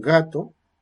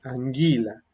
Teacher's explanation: que va a ser post palatal porque va con una anguila no es lo mismo un gato que es más atrás que anguila que es más adelante